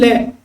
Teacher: जब हम बोलते हैं तो जो जीव है उसका जो भाग है ना अगला, वो किसको छूता है, मसूड़े को छूता है। और इसमें एक ही वर्ण आता है ले। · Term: पार्श्विक